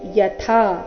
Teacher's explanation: ಥ ಇಲ್ಲಿ ಮಹಾಪ್ರಾಣ ದೀರ್ಘ